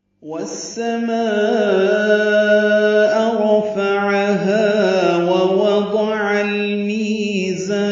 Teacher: والسماء واو کو سین سے ملائیں گے، ادغام شمسی ہوگا. والسماء ما میں الف مدہ کے بعد حمزہ آنے کی وجہ سے مد متصل ہے، ہم اس کو 4 حرکات سے زیادہ لمبا کرتے ہیں.